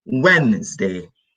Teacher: Remember, D is silent. No D. Wednesday.